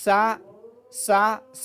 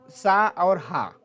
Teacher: इनके उच्चारण में गर्म हवा निकलती है इसलिए इनको हम क्या कहते हैं उष्म व्यंजन कहते हैं